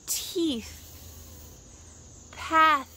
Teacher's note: Your tongue should be out of your mouth and between your teeth, with a stream of air flowing out.